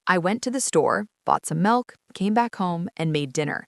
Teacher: The final fall on home or dinner signals the completion of the entire narrative unit. If the speaker used a falling intonation on store, the listener would assume the story was over at that point and might even interrupt. · The rising intonation on store and milk act like an acoustic comma. it tells the listener, wait, there's more coming.